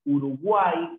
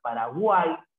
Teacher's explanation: Una vocal cerrada más una vocal abierta más una vocal cerrada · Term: triptongo